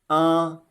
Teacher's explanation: The first tone, a, is a high-pitched sound, and you should keep it steady at that same flat tone.